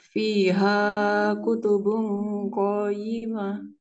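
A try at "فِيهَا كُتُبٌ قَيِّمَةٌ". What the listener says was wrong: Ya-nya ditekan kayak tadi. Fiha kutubung qayyimah.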